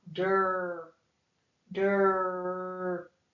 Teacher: our R control vowel means that it takes that vowel sound and it changes it. We hear the R. It's almost like we're sliding right into that R sound.